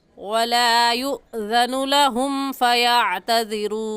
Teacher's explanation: हमज़ा साकिन है और हमज़ा साकिन पर हमेशा झटका देकर पढ़ते हैं, तो इस लफ्ज़ को युज़नु कहना गलत है।